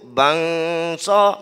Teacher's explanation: Apabila dia sebut bangsa, maknanya bangsa, bang tu bangsa tu jumpa dengan huruf sin. Berjumpa huruf sin, dia pun dengung. Dia terus buat sebutan cara dengung.